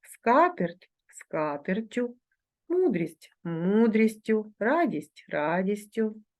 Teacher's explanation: якщо основа іменника початковій формі закінчується збігом двох приголосних звуків то в орудному відмінку однини не відбувається подовження цих звуків